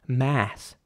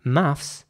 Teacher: in American English there is no s at the end